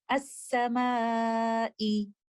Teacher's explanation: In the next example, we can see Alif mad followed by letter Hamza within the same word. By giving it 4 to 5 counts, we will recite this mad as Maddul Muttasil